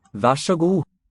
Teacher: So the R is coloring this Så.